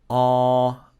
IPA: ɑː